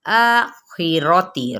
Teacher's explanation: ایک الف اور 2 حرکات کے برابر کھینچنا لازمی ہے، آخراتی، را کو پر پڑھیں گے ، تی باریک پڑھیں گے لیکن زیر کو لمبا نہیں کرنا،